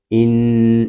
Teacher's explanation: حمزہ نون زیر ان، اس کو ہم ان اس طرح نہیں پڑھیں گے، نون مشدد ہے، اس کو غننے کے ساتھ ادا کریں گے